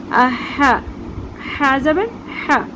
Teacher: حمزہ زبر ا، ہا، آگے ہے ہا، ہا کا مخرج حلق کے درمیان سے ہم نکالیں گے ہا کو، ہلکی سی سانس کی بیچ میں آواز آتی ہے